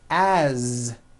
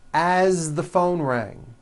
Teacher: you pronounce it with a voiced Z